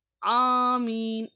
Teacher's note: ஆனா இதுவும் தொண்டையில இருந்து நான் எடுக்கறேன். ஆனா ஐன விட கொஞ்சம் கீழ போய்தான் எடுக்கறேன். ஆனா ஆமீன் அந்த அலிப் பாருங்க அலிப் வந்து நான் தொண்டை கீழ இருந்துதான் எடுக்கறேன் சரிங்களா ஆமீன்.